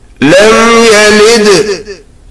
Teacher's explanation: It is لم يلد in which on dal qalqalah is made.